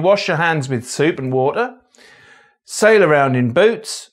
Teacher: a merger between the GOAT and GOOSE vowels